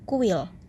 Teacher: akan memunculkan bunyi semi vokwp Sebagai contoh untuk bunyi Uke i4a kata kuil akan menghasilkan bunyi W yang tidak nyata